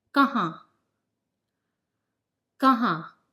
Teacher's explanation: the sound is not n but nasal tone